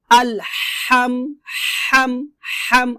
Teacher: তো আলহামদু বলা যাবে না, আলহামদু হবে না, আলহাম বলতে হবে, হাম হাম। আপনাকে এই হাটা গলার মাঝখান থেকে, হলকের মধ্যখান থেকে হাটা চাপ দিয়ে চিকন করে উচ্চারণ করতে হবে।